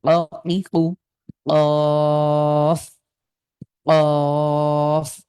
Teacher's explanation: কফের উচ্চারণ কিন্তু ধাক্কা দিয়ে, জিভের গোড়াটা তালুর সাথে লাগিয়ে একটু ধাক্কা দিয়ে দিয়ে